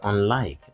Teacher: unlike is stressed on the second syllable